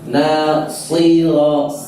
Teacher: sad itu sifatnya tebal. Ketika di kasrah tetap harus tebal